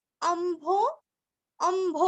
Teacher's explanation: अम्भो अ के ऊपर आघात आधा म और भो